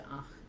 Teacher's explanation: And the same with ach. And so that final voiced fricative devoices to ach because it is indeed word final in this particular construction. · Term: word final devoicing